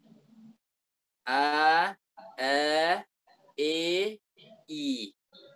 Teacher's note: Kalau kita kurangi sedikit fathahnya misalnya a fathah e kurang fathahnya a e i seperti itu tahapannya. Jadi antara fathah dan kasrah ini ada namanya imalah · Jadi kalau kita ucapkan gini misalnya a, i, kalau a jelas, i jelas, e di mana? Antara fathah dan kasrah.